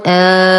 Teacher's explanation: ولاحظ وجود المد فوق الألف، فلا أقول ألف سكون ولا أقول ألف صغيرة، وإنما ألف مد. أعيد: همزة فتحة ألف مد لام سكون آل، تمد بمقدار 6 حركات